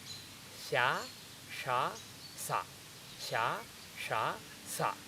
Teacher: sa is on the teeth, sha is behind, sha is even further behind.